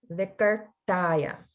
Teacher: the ta sound is the retroflex ta